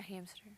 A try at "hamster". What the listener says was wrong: There's no P in hamster. It's hamster. Don't you pronounce the P in hamster?